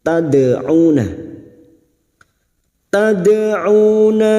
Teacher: Tad'una, tad, dadidubad, jangan sampai tidak terasa ya pantulannya, walaupun qalqalah sugra tetapi pada saat dipantulkan harus tetap terasa pantulannya